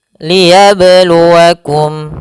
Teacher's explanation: pada huruf ba sukun ada namanya bacaan qalqalah, yaitu bacaan yang memantul